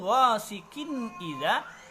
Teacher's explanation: Sementara kalau qiraatnya Imam Khalaf dari Hamzah maka di situ ghasiqin idza wajabas sakat. Nah, jadi wajib dengan mensaktahkan, berhenti satu alif saja